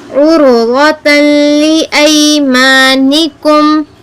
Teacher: رو اور غود کو کیا کرنا ہے پر پڑھنا ہے, موٹا پڑھنا ہے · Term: تفخیم